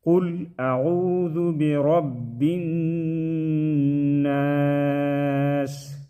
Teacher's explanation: قل اعوذ برب الناس مالک الناس، نون مشدد میں غنہ کریں گے، ناسی جب وقف کریں گے تو ناس پڑھیں گے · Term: وقفاً ناس